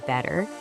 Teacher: it transforms into what we call a soft or flap T. And it sounds way more like a quick D.